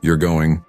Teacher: with your voice rising at the end it's a question but if your voice stays flat it sounds like a statement